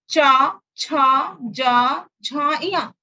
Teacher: तालव्य वर्ग है, तालु को छूती हुई जिह्वा हमारी तालु को ऊपरी जबड़े को छूती है, तालु के पास जाके छूती है, और इसलिए इसको चा वर्ग को तालव्य वर्ग कहा गया।